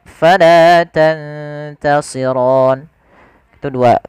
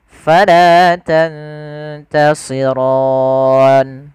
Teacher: Panjangnya adalah dua harakat. Atau boleh kita manjangkan empat harakat atau boleh 6 harakat. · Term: mad arid lisukun